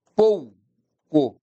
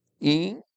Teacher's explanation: O é vogal, I é semivogal. Diminuiu, é decrescente. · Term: ditongo decrescente